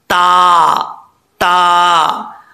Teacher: زبان کی نوک اوپر والی اوپر والے دانتوں کی جڑوں سے لگے تو تا پڑا جائے گا۔ تا کو پڑھنے کے لیے زبان کو اوپر اٹھانا لازمی نہیں ہے، اوپر اٹھائیں گے تو یہ غلط ہو جائے گا، تا کیونکہ بریک ہوتا ہے، ٹھیک ہے۔